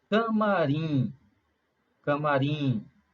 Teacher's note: a sílaba tônica aí no caso é a última sílaba